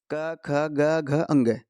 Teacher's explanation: कै वर्ग का जो उच्चारण स्थान होता है वो कंठ से होता है। यहाँ पे लिखा हुआ है साथ साथ कंठ है, क ख ग घ अंग।